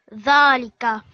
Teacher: So it's kind of a slight buzzing sound.